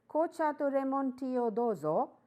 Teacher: the intonation is rising because he has got the things that you wanted